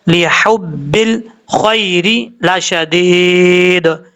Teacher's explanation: لام کے بعد جو ہا ہے یہ ہا بریک ہے، اس کو بھی بریک پڑھنا ہے. لحبل نہیں پڑھنا، لحبل خیر لشدید.